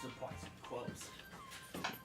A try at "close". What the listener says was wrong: The first time you said it, it sounded like gross. Instead of close.